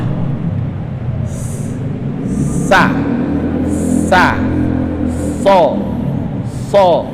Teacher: Ini lidah kita nih berada di belakang gigi gusi bawah.